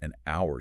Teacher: The H is completely silent. Your vocal cords engage on the ow sound. Which is a vowel sound.